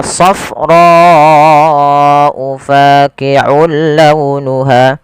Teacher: panjangkan huruf ro sepanjang empat harakat karena di sini ada bacaan yang kita namakan dengan mad wajib muttasil